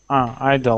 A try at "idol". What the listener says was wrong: Not E, it's I. Idol. I don't think so. But I don't think so.